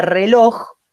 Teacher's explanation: la que recibe el tono la fuerza el acento es la o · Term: vocal tónica